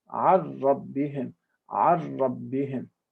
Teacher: You don't make 2 harakat, because shadda for ra is not 2 harakat. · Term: simple shadda